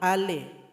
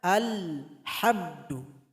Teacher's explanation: Jadi ketika membaca lam tidak boleh ditambahkan e. Yang betulnya alhamdu.